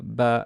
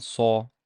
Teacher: we called them the velarized sounds, how these vowels change in quality, becoming from a into o